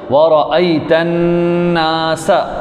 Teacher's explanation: نون پر غنہ ہے، اس کو لمبا کریں گے، سین سیٹے والے حروف میں سے۔